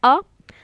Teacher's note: अ कौन सा स्वर है, ठीक है, तो वह मध्य स्वर है